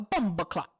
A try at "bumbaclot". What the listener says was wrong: Nope. You said too fast. Too fast. No, too fast. Ya bumba clot.